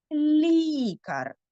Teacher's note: звісно тут ми чуємо м'який ль